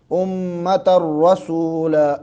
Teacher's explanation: را کو موٹا کر کے پر کر کے پڑھیں گے